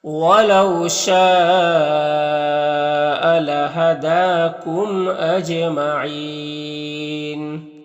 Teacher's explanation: دال میں کھڑا زبر ہے جو الف مدہ کی طور ہوتا ہے، میم میں اظہار شفوی ہوگا، اور جیم حروف قلقلہ میں سے ہے اور اس کے اوپر جزم بھی ہے، تو جیم میں قلقلہ ہوگا، یعنی جیم کو ادا کرتے وقت جیم کی آواز اپنے مخرج سے ٹکر کھا کر الگ ہو جائے گی، اور یہاں پر وقف کریں گے تو مد عارض وقفی ہوگا، تو اس طرح سے پڑھیں گے۔